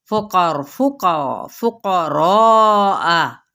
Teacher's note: क़ाफ़ भी पूरा, रॉ भी पूरा, 4 हरका लंबा करें, और इसको हमजा को वाज़े तौर पे पढ़ें